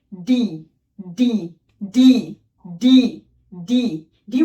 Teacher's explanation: ডি ডি ডি ডি ডি ডি উচ্চারণ করার ক্ষেত্রে তোমার জিহ্বার যে ডগা আছে, এটি উপরের তালুতে লাগিয়ে দেন শক্ত করে ছেড়ে দিলে এটি উচ্চারিত হবে